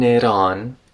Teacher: before the a in on the T turned into a tap